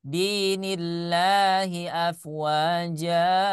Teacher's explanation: Mat iwad dibaca dua harokat, ya. Jadi jangan berlebihan.